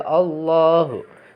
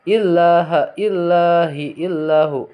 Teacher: Nah, jadi yang tarkik itu apabila lafaz Allah sebelumnya itu ada kasroh ya atau jr, illaha illahu illahi gitu, itu tarkik. Membacanya kalau tafhim tebal ya Allahu. Kalau tarkik tipis.